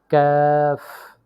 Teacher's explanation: জিহ্বার গোড়া থেকে একটু আগে বাড়িয়ে তার বরাবর উপরের তালুর সঙ্গে লাগিয়ে উচ্চারিত হয়